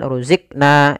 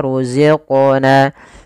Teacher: Kemudian pada lafal qaf ada bacaan qalqalah. Yaitu suara qafnya dipantulkan. Kesalahan yang terjadi adalah dia tidak memantulkan.